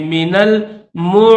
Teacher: نون کو لام کے ساتھ ملائیں گے